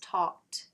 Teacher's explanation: the ed is just pronounced the t, the flap, essentially, because the k at the end is voiceless